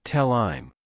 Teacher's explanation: In fast, connected conversational English, when pronouns starting with the letter H, such as him, her, his, and have, follow another word, native speakers often drop the H sound completely and link the vowel to the previous consonant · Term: The dropped H